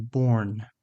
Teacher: Remember to have some tight rounding for that or.